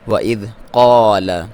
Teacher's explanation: قاف کو موٹا پڑھنا ہے، حروف مستعلیہ میں سے ہے اور الف مدہ ہے، لام کو باریک۔